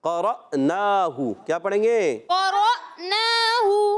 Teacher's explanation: قاف پر زبر، را پر زبر، را کو حمزہ سے ملا دیں گے اور جھٹکا دے کر ادا کریں گے